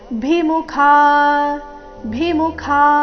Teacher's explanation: ಮುಖ ನಲ್ಲಿ ಖ ಮಹಾಪ್ರಾಣ ದೀರ್ಘ